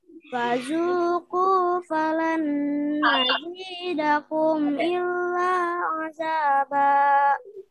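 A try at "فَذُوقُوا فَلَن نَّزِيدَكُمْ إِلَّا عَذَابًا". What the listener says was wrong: Alhamdulillah, Masya Allah.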